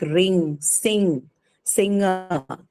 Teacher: the last sound you hear in words like ring, sing, this is actually the ng sound, the third nasal sound in the English language, right? So these sounds are produced as the air is pushed out of the nasal cavity or the nose when the velum is lowered.